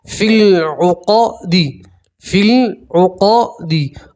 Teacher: فا کو سیدھا لام سے ملائیں گے، لمبی یا نہیں پڑھیں گے اور یہ الف کو بھی نہیں پڑھیں گے، فِی الْعُقَدِ، فِی الْعُقَدِ۔